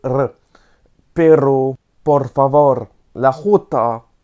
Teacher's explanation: Par exemple, ils utilisent le R roulé